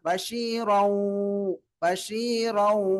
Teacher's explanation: வாவுடைய உச்சரிப்புல வைத்து மூக்குல சப்தத்தை வெளிப்படுத்தி ஓத வேண்டும் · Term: இதுகாம் நாகிஸ் பில் குன்னா